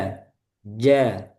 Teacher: Jadi, kebalikannya hames. Jadi dia jaher, tertahan udaranya. Jadi bukan ja, tapi ja. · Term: jim